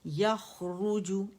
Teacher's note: ख मोटा है, र बारीक है